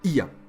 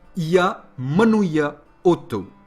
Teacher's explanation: Le premier ya que nous avons vu ensemble, la particule verbale, comporte l'occlusive glottale, ia. Par exemple, je peux dire ia manuia oto.